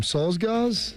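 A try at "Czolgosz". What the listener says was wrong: I think it's actually a CH, a Cholgals.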